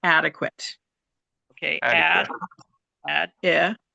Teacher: and the stress is on the first syllable